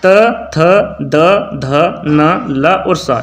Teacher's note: वे व्यंजन जो जीभ की नोक द्वारा ऊपर के दांतों को स्पर्श करने पर उच्चारित होते हैं। याद रखिएगा, वे व्यंजन जो जीभ की नोक द्वारा ऊपर के दांतों को स्पर्श करने पर उच्चारित होते हैं दंते व्यंजन कहलाते हैं।